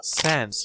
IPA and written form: sænz (Sans)